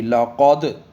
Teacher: قاف پہ قلقلہ، دال پہ بھی